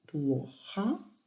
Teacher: La première syllabe est accentuée, donc O est bien O. Плохо. Après H, O est inaccentué.